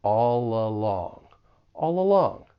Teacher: we can link that final consonant sound in all with the beginning vowel sound in along. And it's almost like we're just moving that consonant sound over to the next word or syllable.